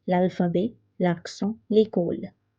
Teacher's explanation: So this L is taking the sound of next vowel. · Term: L'apostrophe